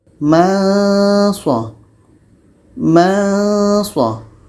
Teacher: Nun mati bertemu so dengung dan kita baca samar ya.